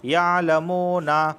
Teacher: دیکھیں یہاں واو ساکن سے پہلے پیش آیا ہے، تو اس وجہ سے میں منہ کو کھینچ رہا ہوں